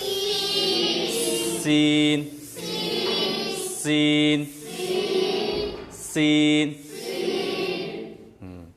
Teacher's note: सीटी की तरह एकदम बारीक, सीन।